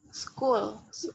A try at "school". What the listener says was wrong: Ayo, panjang.